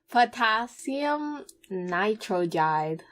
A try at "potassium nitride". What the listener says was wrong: Okay, that was 3 syllables. Nitride.